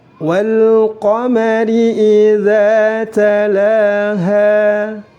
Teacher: Ha panjang, 2 harokat, karena di situ terdapat alif. Jika tidak ada alif maka harus disukunkan.